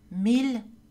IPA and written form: mil (mille)